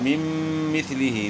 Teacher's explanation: تو نون کا میم میں ادغام ہوا مع الغنہ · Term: ادغام مع الغنہ